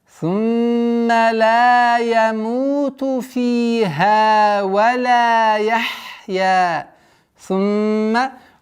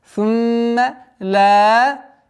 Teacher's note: Удержание назализации мимо в размере двух огласовок. Сумма ла. Удлиняем в размере двух огласовок фатху.